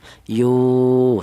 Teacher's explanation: Ini dibaca mad thobi'i. Yu dipanjangkan dibaca panjang yaitu dua harakat. Satu alif atau dua harakat atau dua ketukan. · Kemudian di sini ada yu, yaitu ada wawu mati, di mana wawu mati ini didahului huruf yang berharokat dhammah, ini dibaca matobi'i. Yu dipanjangkan, dibaca panjang, yaitu 2 harokat, 1 alif atau 2 harokat atau 2 ketukan